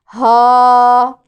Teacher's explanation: حلق کا سب سے نیچے والا حصہ اقصی الحلق، اس سے یہ ادا ہوتا ہے ہا، گہری سانس کو باہر کی طرف نکالنا ہے، ہا۔